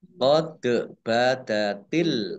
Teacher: dal sukun bacaan kolkolah atau memantul, dibaca memantul, ditampakkan pantulannya.